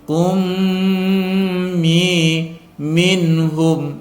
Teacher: karena ada tanwin bertemu dengan mim cara membacanya dimasukkan disertai dengung